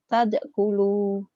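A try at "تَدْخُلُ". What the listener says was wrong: Tadkhulu kotor. Kho. Tadkhulu.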